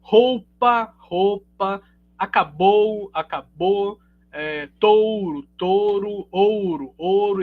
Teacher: a gente realiza muita monotongação né